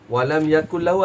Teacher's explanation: Masuknya tanpa dengung. Dan dia adalah kita panggil idgham mutaqarribain sebab dia berlaku pada dua huruf yang berhampiran sifat.